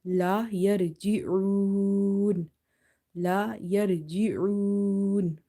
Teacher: And if madda letter occurs as a second last letter and the last letter is also sakin because of waqf, so we apply the rule of madde arid lis sakun. So we stretch this waw up to 3 alif.